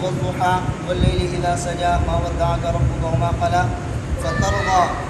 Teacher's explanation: सबसे पहली बात तो ये है कि दोनों रावियों के लिए बैन सूरतैन बिस्मिल्लाह है और मद्द मुनफ़सिल मद्द मुत्तसिल में हफ्स की तरह तवस्सुत है, मद्द लाज़िम में हफ्स की तरह तूल मद करते हैं। और ज़वातुल या के अंदर दोनों रावियों के लिए इमाला है